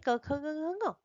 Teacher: इनका उच्चारण स्थान है कंठ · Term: कंठ्य वर्ण